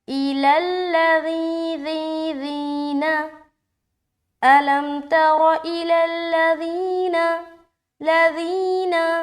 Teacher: ذی میں پریشر ڈالتے ہوئے یا مدہ کریں گے اور نون کو جلدی چھوڑنا ہے